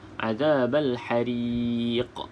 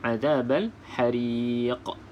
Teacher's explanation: Maka kita perlu lantunkan disebabkan dia berakhir dengan huruf qaf ataupun di hujung ayat, di hujung perkataan. Di sini qalqalah kubra, azabal hariq.